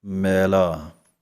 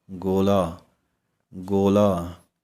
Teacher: ਜਦੋਂ ਪੋਲਾ ਬੋਲਣਾ ਹੈ ਪੈਰ ਵਿੱਚ ਬਿੰਦੀ ਤਾਂ ਤਾਲੂ ਦੇ ਵਿਚਕਾਰ ਵਾਲੇ ਪਾਸੇ ਨੂੰ ਜੁਬਾਨ ਪੁੱਠੀ ਹੋਵੇਗੀ